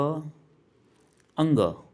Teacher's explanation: अंग आपका जो है वह मुख्य रूप से नासिक के से बोला जाता है नाक से बोला जाता है जो कि क वर्ग के अंतर्गत आता है मुख्य रूप से